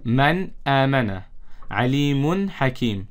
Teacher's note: we have to read this nun sakin or tanween clearly without ghunna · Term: izhar